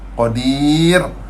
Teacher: sebelum ra mati tu ada ya mad kita kena nipis